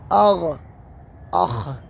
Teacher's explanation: تیسرا مخرج ہے جو ہمارے منہ کے قریب ہے، جس کو کہتے ہیں ادنا حلق